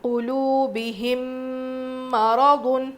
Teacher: میم ساکن کے بعد میم آ جائے تو غنّے کے ساتھ ملا کر پڑھیں گے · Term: ادغام شفوی